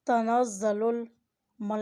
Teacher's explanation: لام کے اوپر کھڑی زبر اور مد ہے، اسے کھینچ کر ادا کریں